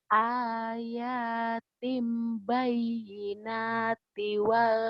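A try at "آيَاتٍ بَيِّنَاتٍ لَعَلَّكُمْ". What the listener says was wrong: Til. Bukan tiwal. Til. Til. Idgham bila gunnah. Til.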